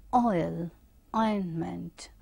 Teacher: Ointment, so back vowel moving towards the front, that means back part of the vowel tongue raises and then it glides towards the front part · Oil, so it is starting here, back vowel, and then moving towards the front E sound. You can see here it is moving from here to here.